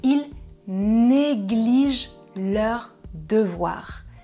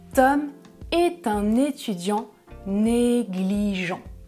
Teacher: de quelque chose donc numéro un c'est le verbe ils négligent troisième personne du pluriel je ne prononce pas -ent et numéro 2 Tom est un étudiant négligent je prononce -ent